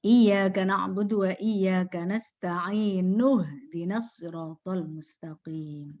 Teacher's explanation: hamzahnya tidak dibaca kalau disambung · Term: hamzah wasol